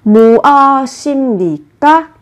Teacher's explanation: Vị trí받침 là 비읍, theo sau là phụ âm n. Thế thì ở vị trí của bờ này, các bạn cần đọc biến âm thành âm m. Như vậy các bạn sẽ phát âm là 임.